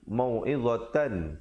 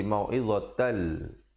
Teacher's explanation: Di sekali lagi kita jumpa idgham bila gunnah ni. Tanwin bertemu lam. Asalnya mau'idhatan, tapi bila datang lam jadi mau'idhatal.